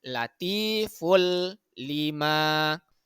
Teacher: nah huruf lam ro itu merupakan huruf idgham bila ghunah jadi tanwinnya kita lebur kita masukkan ke dalam huruf lam